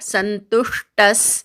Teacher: क्षमी विसर्गाच्या पुढे क्ष आला की विसर्गाचा पूर्ण उच्चार करतात, त्यामुळे सुखहा असा उच्चार करायचा. संतुष्टस तूवर आघात येईल, विसर्गाचा अर्धा स उच्चार करायचा